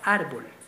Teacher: mayor fuerza de voz en la penúltima sílaba eso lo convierte en una palabra grave